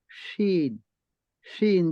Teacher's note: জিহ্বার মধ্যখান তার বরাবর উপরের তালুর সঙ্গে লাগাইয়া